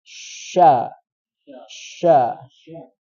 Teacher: tafasyi Jang tafasi yaitu udara yang menyebar di seluruh mulut